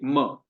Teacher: म में हमारे दोनों होंठ स्पर्श होते हैं, म। ठीक है।